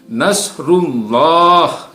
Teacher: Ya, ini ada Allah lafzul jalalah yang sebelumnya adalah ada huruf ro yang bertanda dhammah, maka dibaca tebal.